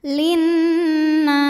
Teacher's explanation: Nunnya gunnah musyaddadah karena nun bertasydid. Cara bacanya dengung, bunyi n tahan sampai berasa ke hidung.